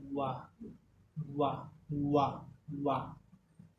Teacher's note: दंतोष्ठम मतलब दंत और ओष्ठ से इसका उच्चारण